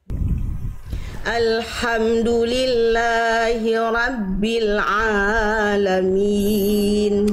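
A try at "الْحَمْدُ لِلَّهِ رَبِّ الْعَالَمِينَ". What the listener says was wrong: la dan ainnya kepanjangan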